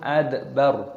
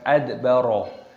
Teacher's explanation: Id dal sukun dibaca id, dalnya berharokat sukun maka dikolkolah, dipantulkan suaranya. Adbar, roknya dimatikan dibaca sukun adbar, bukan adbaro